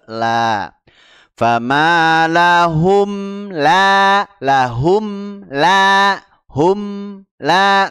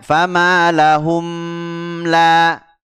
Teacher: ketika izhar syafawi itu tidak ditahan ya tidak di tahan langsung masuk ke huruf lamnya setelah mingkem langsung ke la famaahum la lahum la Hum la